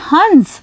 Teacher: इसका उच्चारण करते समय ध्वनि नाक से निकल रही है, और जब आप मेरे साथ हंस शब्द बोलेंगे तो आप पाएंगे कि इस चंद्र बिंदु का उच्चारण करते समय ध्वनि नाक और मुंह दोनों जगह से निकल रही है। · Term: अनुस्वार